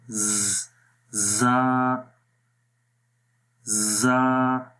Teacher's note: صفیر ہے، یعنی اس کے اندر سیٹی کی آواز آتی ہے۔